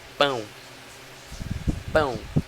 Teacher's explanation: Como o A se destaca mais, ele recebe a função de vogal. E o O recebe a função de semivogal, porque ele é mais fraco.